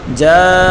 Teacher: فإذا جاء جیم الف زبر جا الف مدہ ہے، حروف مدہ کے بعد حمزہ ہے تو یہاں مد کریں گے، مد متصل ہے